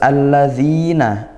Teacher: idgham syamsiyah al bertemu huruf lam dibaca masuk langsung ke huruf syamsiyah